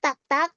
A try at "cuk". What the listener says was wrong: Cuk, itu dibaca U ya. Cuk. Cuk.